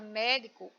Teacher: Na palavra médico, o mé é a sílaba tônica, portanto, a sílaba mais forte